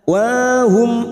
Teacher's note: mim sukun bertemu Jim Idhar syafawi dibaca jelas tanpa mendengung